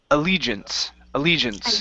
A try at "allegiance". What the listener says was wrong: Allegiance. Allegiance. Allegiance.